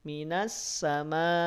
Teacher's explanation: pastikan suaranya diputus suaranya dihentikan suaranya dipotong karena Hamzah secara karakteristik suaranya diputus